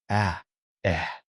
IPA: ə